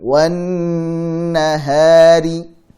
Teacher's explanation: Tahan di sini karena nun tasydid dibaca dengan memanjangkan gunnah. Jadi gunnah mutawwalah.